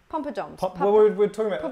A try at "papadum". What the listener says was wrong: Papadum. But it's papadum. It just hasn't got a pom. It's no pom.